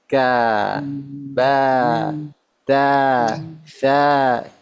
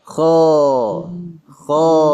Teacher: kalau huruf-huruf istifal suara itu mengalir langsung ke bawah ka ba ta tsa tapi huruf istila dia naik dulu ke atas tegang